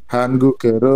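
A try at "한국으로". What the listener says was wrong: Bukan han ya. Hang ya ini ya, hangguk. Nah, menjadi hanggukero.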